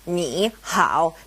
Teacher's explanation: both knee and howl are third tone characters